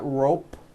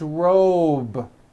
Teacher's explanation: robe also has a voiced B ending it's not rope with an unvoiced P